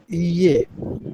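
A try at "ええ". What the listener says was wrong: ইয়ে না এ, এ এ উচ্চারণটা এ এ এমন না এ।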